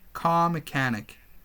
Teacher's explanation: so in car mechanic we don't pronounce r r is very unclear